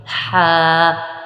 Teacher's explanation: ہا کا مخرج حلق کے درمیان والا حصہ ہوتا ہے، ہا نرمی کے ساتھ آپ نے ادا کرنا ہے اور اس کو بھی تھوڑا سا لمبا کریں گے، ہا۔